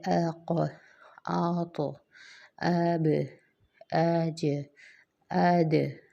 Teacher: قلقلے کا مطلب یہ ہوتا ہے کہ آپ نے جو جگہ جس جگہ سے حرف ادا ہونا ہے اس کو زبان رکھنی اور پھر چھوڑ دینا ہے، تو پھر وہاں سے ایک ایکو کی آواز آئے گی، جیسے اق، آط، اب، اج، اد، ٹھیک ہے۔ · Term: قلقلہ